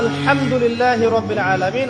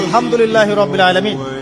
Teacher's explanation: এই হা এর মাখরাজ কোথায়? কণ্ঠনালীর মাঝখান থেকে।